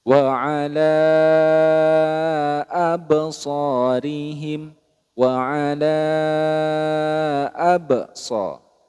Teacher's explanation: jadi panjang 4 sampai 5 harakat